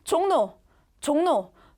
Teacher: 앞에 이응으로 끝났으니까. 앞에 이응의 영향 때문에 리을이 니은으로 바뀐 겁니다. 자, 이응과 니은은 둘 다 비음이에요. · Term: 비음화